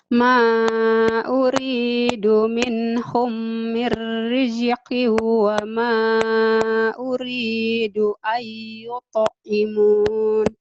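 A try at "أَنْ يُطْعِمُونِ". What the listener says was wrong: Iya, bagus. Tinggal dilatih ainnya ya.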